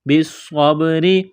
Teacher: صاد کو موٹا کرنا ہے، سیٹی کی آواز پیدا کرنی ہے صاد میں۔ با ساکن ہے تو با پر قلقلہ کریں گے۔